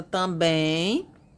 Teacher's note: a última sílaba está tônica, termina com E, M. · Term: oxítonas